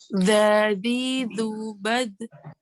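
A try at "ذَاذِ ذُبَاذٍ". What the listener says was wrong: Kan ini masih nyasar huruf dal. Huruf dal. Iya, tempelin dulu coba.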